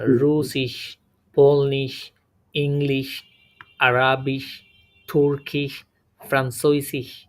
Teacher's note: প্রত্যেকটা শেষে প্রায় তালব্য স্বনের মতো কি উচ্চারণ হচ্ছে